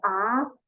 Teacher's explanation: Automáticamente cuando yo establezco una vocal abierta, A, abro la boca.